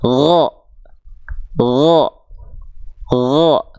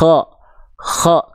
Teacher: kalau huruf gain dia jaher tertahan nafas dan mengalir suara